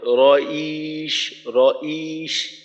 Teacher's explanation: রটা আলাদা হয়, ইটা আলাদা, ই চলে আসে, অর্থাৎ হামজার মতো একটু উচ্চারণ চলে আসে। এই টানটাকে একবারে রইশ, ইয়াটাকে লম্বা করতে হবে, এখানে হামজার মতো আওয়াজ আনা যাবে না।